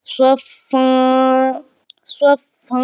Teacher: और अगर हम वस्ल करते हैं तो फिर फ़ा की आवाज़ को हमने इख्फ़ा में बदल देना है, यानी कि आवाज़ को हमने नाक के बांसे से अदा करना है